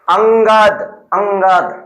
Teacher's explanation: यह स्वर के बाद आने वाला व्यंजन है। जिसकी ध्वनि नाक से निकलती है। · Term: अनुस्वार